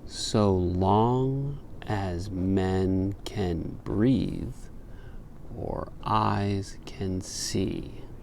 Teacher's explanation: could you hear a little pause between breathe and or? That little pause is called a caesura.